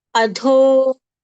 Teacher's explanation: Tha again is a mahapran sound. Adho, dho is a mahapran sound again, getting more breath and more strength